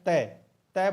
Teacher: आप जो जीभ है वो दांत के टकरा रही है